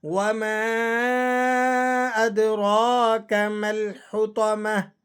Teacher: وما مد ہے تو آپ نے اسے 4 الف تک کھینچ لینا ہے